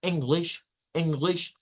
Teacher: es un homónimo sí okay pero esta es la i corta e es como una mezcla entre la i y la e